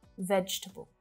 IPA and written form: ˈvɛdʒ tə bəl (VEGETABLE)